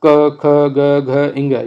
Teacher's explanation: फिर इसमें जो पूरा क वर्ग होता है वो कंठ से निकलता है। क वर्ग जो है वो पूरा कंठ से है